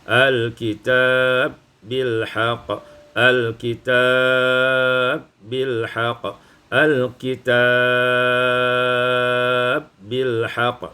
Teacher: idghamul ba fil ba, diidghamkan ba pada ba maka menjadi al-kitab bil haqq, al-kitab bil haqq, al-kitab bil haqq, dibaca qasar, tawassut dan isba'.